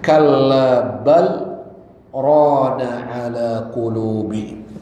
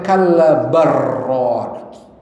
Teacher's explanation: kalla bal itu berhenti dan tidak bernafas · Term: saktah